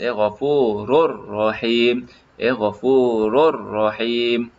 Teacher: kita tak perlu sebut dengan dengungan · Tanwin di sini dia seolah-olah dhammah saja masukkan ke huruf yang selepasnya. Dia seolah-olah ada dua ra, satu ra mati, satu ra berbaris atas. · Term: idgham bila gunnah